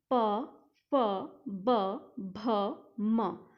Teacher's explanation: प वर्ग में जो है दोनों होठों पर आकर के हवा अटक जाती है, इसलिए इस वर्ग को हम ओष्ठ्य वर्ग बोलते हैं।